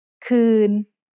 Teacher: คืน is mid-tone because it has a low-class consonant and a live ending. คอควาย สระอือ นอหนู คืน When สระอือ is not followed by a consonant, we need to write it differently.